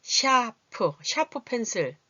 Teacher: ' 샤프 ' 의 경우 ' 사 ' 가 아니라 ' 샤 ' 로 발음 되므로 ' 이 ' 소리 가 들립니다